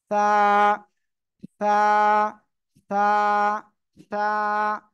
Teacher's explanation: জিহ্বার আগা সামনের উপরে উপরে দুই দাঁতের আগের সঙ্গে লাগাবো লাগিয়ে হালকা বাতাস বের করবো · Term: সা অক্ষরটা